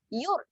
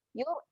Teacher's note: Ra ni, ra mati ni, ketika dia mati kat sini dia adalah ra yang tebal, dia menjadi tebal Yur, kerana sebelumnya berbaris hadapan.